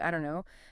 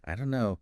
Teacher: the don't and know just merge. >> So becoming aware of this linking is really important for understanding and for sounding more natural yourself.